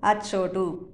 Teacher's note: ఆ అనేది హ్రస్వం అయిపోయింది, చిన్న ఆ అయిపోయింది